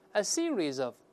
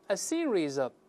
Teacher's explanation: Z 跟 of 连读变成 Z of